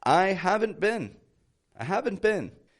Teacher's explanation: let's consider have the positive have and now the negative haven't I don't say have not I say haven't my voice raises up at the end